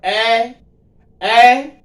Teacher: कंठ भी माना जाएगा, तालु दोनों, जैसे ए इसका उच्चारण जब करते हैं अब ए तो कंठ और तालु दोनों से निकलती आवाज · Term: कंठ तालु